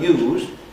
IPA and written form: juːz (use)